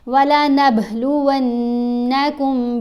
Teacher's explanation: با کے اوپر ہم نے کلکلا کرنا ہے اور اس نون کے اوپر غنہ کریں گے